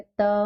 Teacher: त वर्ग में जो हमारी जिह्वा है दांतों से टकरा रही है, इसलिए इसलिए इसे क्या कहते हैं, दंतव्य भी कहते हैं, है ना।